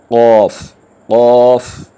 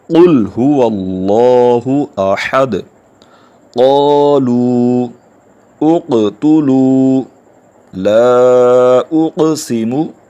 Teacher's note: قاف کو ادا کرنے کا طریقہ یہ ہے کہ زبان کی جڑ اور تالو کے نرم حصے سے، یعنی گلے کے پاس سے جہاں سے زبان ہماری سٹارٹ ہوتی ہے، جڑ سے، اس جگہ سے قاف کو ادا کیا جائے گا۔